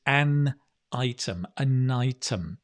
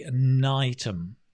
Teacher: We often link, right? You don't have to, but at least when you're listening, you'll hear native speakers say an item, like night, like day and night, an item.